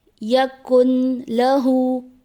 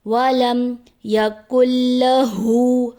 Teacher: کاف کو ہم لام کے ساتھ ملائیں گے کیونکہ لام پہ تشدید ہے، اس کی وجہ سے نون کی آواز نہیں آئے گی